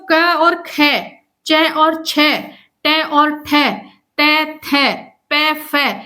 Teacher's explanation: ये जो वर्ण है या व्यंजन है इनको बोलने में कंपन उत्पन्न नहीं होता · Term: अघोष